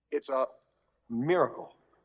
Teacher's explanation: A statement. Everything is stressed here. Everything is separated.